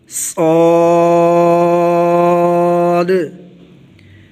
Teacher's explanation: جس طرح ہم نے زا اور سین کو پڑھا تھا اسی طرح زبان کی نوک نیچے والے دانتوں سے لگائیں گے، سامنے کے نیچے والے دانتوں سے زبان کی نوک لگے گی اور ہلکا سا اوپر والے دانتوں کو ساتھ ٹچ کرنا ہے، منہ کے اندر آواز کو بھر کے موٹی آواز کے ساتھ صاد پڑھا جائے گا، صاد۔ زبان کی کروٹ جب دائیں یا بائیں طرف سے اوپر والی 5 داڑھوں سے لگے تو موٹی آواز کے ساتھ ضاد پڑھا جاتا ہے، ضاد۔